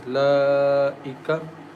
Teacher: Lam has standing fatha. We stretch the sound for two counts as laika. This Hamza is in same words.